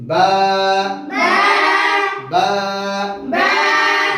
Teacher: বা থেকে উচ্চারিত হয় দুই ঠোঁটের ভিজা অংশ থেকে।